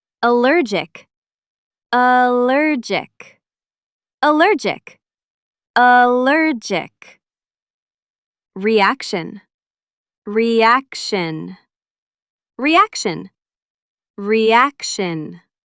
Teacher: The stress is on the second syllable in both words.